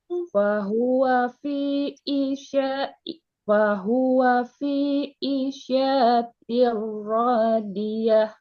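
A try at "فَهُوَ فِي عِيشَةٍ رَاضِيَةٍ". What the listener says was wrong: Masih panjang tuh syanya. Ulangin.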